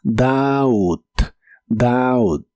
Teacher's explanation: El verbo dudar en el presente de inglés es doubt. La o se pronuncia como una a normal y la b no se pronuncia.